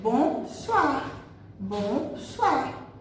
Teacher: OI em francês, essa junção de vogais O com I, faz som de UA, UA.